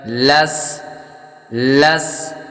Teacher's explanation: سین حروف صفیریہ یعنی سیٹی والے حروف میں سے ہے تو سیٹی کی آواز آئے گی